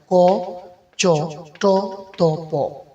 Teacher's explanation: যে বর্ণগুলো উচ্চারণ করার সময় কম বাতাসের প্রয়োজন হয় ঠিক তখনই উক্ত বর্ণগুলোকে অল্পপ্রাণ বর্ণ বলা হয়